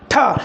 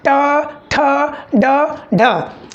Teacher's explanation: जब भी हम ट ठ ढ बोलते हैं तो हमारे जीभ का जो आगे का भाग होता है वो मुड़ करके जाके कहाँ ठोकर मारता है? मूर्धा पे। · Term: मूर्धन्य ध्वनि